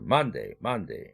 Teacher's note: man의 액센트가 있으니까 man만 1강세를 줘야 되겠죠. day는 여전히 약강세로 빠지고요.